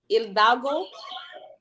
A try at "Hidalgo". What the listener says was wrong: Hidalgo. Hidalgo. The H is silent.